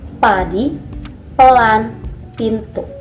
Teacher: Selanjutnya tahan udara, tunggu sejenak untuk memberi tekanan pada aliran udara. Buka bibir tiba-tiba, udara dilepaskan dengan cepat menghasilkan bunyi letupan tanpa getaran.